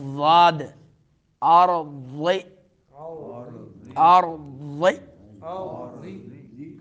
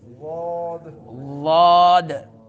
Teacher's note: یہ زبان کی جو کروٹ ہے یہ اوپر دانتوں کے مسوڑوں سے جا کے لگے گی تو تب یہ حرف ادا ہوتا ہے